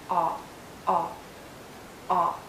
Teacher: It's a short sound and a very open and rounded sound. Make your lips rounded and lower your jaw.